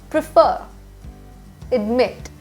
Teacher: there is a stress on the final syllable